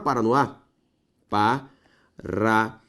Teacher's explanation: Última sílaba tônica com a palavra oxítona.